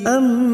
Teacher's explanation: Bertemunya dua huruf mim yang pertama Sukun dan yang kedua bertasdid disebut dengan Idam Mimi kita dengungkan selama dua atau tig harakat nun sukun bertemu ya